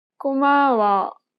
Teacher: make sure to lower the pitch of the last syllable in the sentence · She kept the same pitch for the first and second syllable, but lowered the tone for the last syllable.